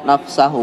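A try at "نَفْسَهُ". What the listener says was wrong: Nafsah. Ya, keliru harakatnya itu ya. Fa-nya disukun. Nafsa.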